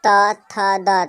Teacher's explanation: त थ द तऽ दंत में जीव टकराइत अछि तऽ दंत भऽ जायत।